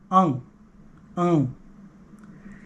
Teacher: When we do the nasal sound, it's the back of the tongue closing off the throat area.